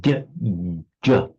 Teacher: It's not like a retroflex d or j or fully dental. It's a palatal j.